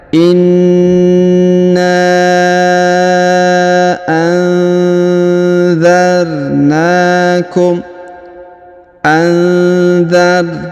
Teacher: nun sukun bertemu dha, maka didengungkan dan disamarkan